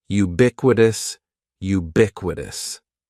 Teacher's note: the stress is going to be on that second syllable